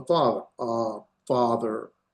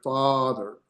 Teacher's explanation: And so it has a longer carry, father. So even if you say it fast, father, you're still spending more time in that vowel sound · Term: comates